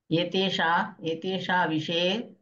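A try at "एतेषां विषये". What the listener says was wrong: ఏతేషాం విషయే, మకారాన్ని పెదాలు కలపాలి, మళ్ళా కలపండి, మళ్ళా చెప్పండి ఒకసారి,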